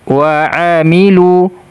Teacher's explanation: makhraj huruf Ain ditenggorokkan bagian tengah